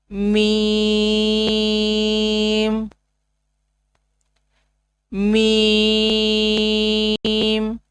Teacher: دونوں ہونٹوں کے خشکی والے حصہ سے میم ادا ہوتا ہے. میم. دونوں ہونٹوں کے خشکی والے حصہ سے میم ادا ہوگا.